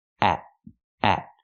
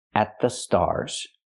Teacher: say they're looking at the stars here the t is before a consonant so we make a stop T at at put the tongue up and stop the air they're looking at the at the stars they're looking at the